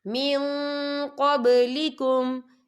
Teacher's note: یا دیکھیں من، یہاں نون ساکن ہے، نون ساکن کے بعد جو ہے قوف آ رہا ہے، اور قوف جو ہے اکفا کا ورڈ ہے تو ہم یہ اکفا کریں گے، نون ساکن کی آواز کو ناک میں چھپائیں گے